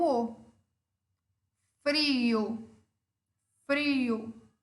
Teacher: eu tenho uma vogal fechada tônica e uma vogal aberta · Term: hiato